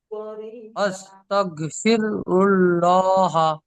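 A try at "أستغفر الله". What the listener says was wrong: আস্তাগ ফির হবে না, আস্তাগ ফি রুল্লাহা। আস্তাগ ফির নয়, আস্তাগ ফির হবে না। ফির হতে গেলে আপনার রয়ের ওপর সাকিন আছে, রয়ের ওপর সাকিন নেই। রয়ের ওপর আপনার পেশ আছে, অর্থাৎ জি, তা আস্তাগ ফি রুল্লাহা।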